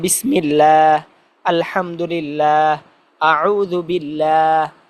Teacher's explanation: আল্লাহ তাআলার নামের আগে যদি জের আসে, তখন এটাকে আবার পাতলা করে পড়তে হয়, লা পড়তে হয়।